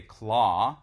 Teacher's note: So that would be now today a monophthong. We say claw, which is a lengthened ah vowel. Whereas in, of course, in Middle English, that was a diphthong, that was claw.